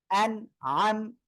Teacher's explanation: নুন সাকিনের পরে আইন আসছে তাহলে কি ইজহারের অক্ষর স্পষ্ট আকারে পড়তে হবে